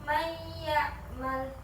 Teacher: Jadi menjadi huruf satu huruf yaitu menjadi ya tasydid. Cara membacanya itu mentasydid sukun ya. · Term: idgam biguna